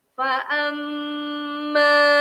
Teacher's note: Nampak alif tu tidak berbaris. Maka ma itu perlu dipanjangkan 2 harakat.